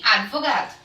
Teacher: eles não é advogado é advogado esse de é mudo ok ela consoante muda então eu não posso acrescentar uma vogal nessa consoante muda eu preciso pronunciar ela muda também